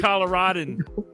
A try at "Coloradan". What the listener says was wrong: No, it's Colorado. There is no A in there.